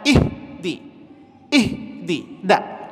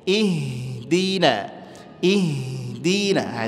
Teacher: I kebanyakan di sini kesalahannya adalah ihdi ihdi nak ihdi kemudian ha memiliki sifat Hames dia mesti ngalir dan enggak boleh habis suaranya Jangan ihdi ihdi nak ngalir aja lembut ihdina ihdinaah itu dia